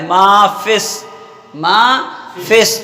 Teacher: یہاں پر بھی لام ہے مگر یہاں پہ لام نہیں پڑھا جا رہا، لام چھوڑ دے رہے ہیں، سین میں آ رہا ہے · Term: ادغام